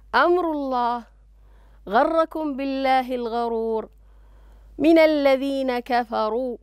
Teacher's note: كل هذه الراءات التي نراها مفخمة